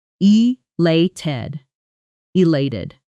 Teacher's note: Feel the stress on the second syllable